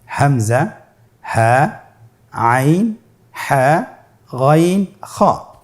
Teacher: এই 6টি হরফে হলকের থেকে উচ্চারিত হয়। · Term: ইজহারের হরফ